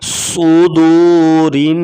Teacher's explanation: صدورن را کے نیچے زیر ہوگی تو را کو باریک پڑھیں گے